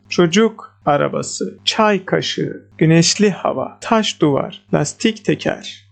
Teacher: What about noun phrases? Stress is on the first word again.